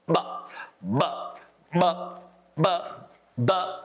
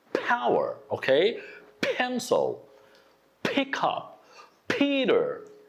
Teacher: with the letter P, when it's unvoiced consonant sound, you will see it blows a lot of air outside and it's moving